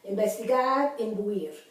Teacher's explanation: The N becomes the sound of the M in front of B chica, B grande y la P.